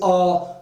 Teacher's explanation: आ बोलेंगे तो उच्चारण अवयव हमारे पूरी तरह खुल जाते हैं ना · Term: विवृत